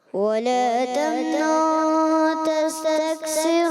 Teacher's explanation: ولا تمنن اخفا غنہ بھی تو کرنا ہے ایک الف کا